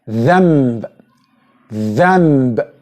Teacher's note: you will notice that nun here is not pronounced nun, it's pronounced mim